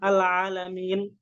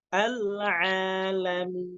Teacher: Huruf nun itu salah satu sifatnya tawassut, jadi jangan langsung dipotong. Jangan al-alamin, jangan gitu, tapi harus dialirkan.